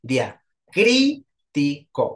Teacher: o sea, cri es la sílaba tónica